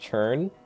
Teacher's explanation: my accent is to pronounce it with a CH